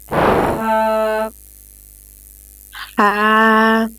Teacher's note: Sharp mean you have to, when you read the letter ha, you have to feel the sharpness in your middle throat, and ha is the sound of ha comes from your middle throat